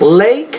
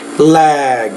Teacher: when the K or a voiceless kind of consonants at the end of a word then the vowel sound is shorter